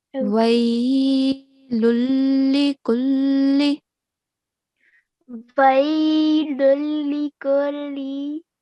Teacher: And you pronounced this idgham kamil really well. Okay, we are applying the rule of complete assimilation with no nasal sound here